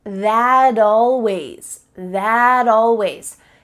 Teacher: we link together words by making the final T change into a D